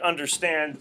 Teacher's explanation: it's three syllables so you're going unstressed unstressed stressed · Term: anapestic